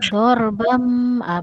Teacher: Bunyi tanwin digantikan kepada bunyi mim. · bam iklab dibaca dengan bibir bertemu bibir.